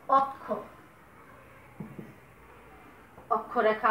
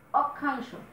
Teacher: শব্দের প্রথমে অ পেয়েছি, তারপরে ক্ষীয় আছে, তাহলে এই অ এর উচ্চারণ সংবৃত রূপে উচ্চারিত হবে।